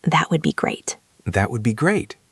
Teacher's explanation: I want you to say it with a big smile and rising intonation.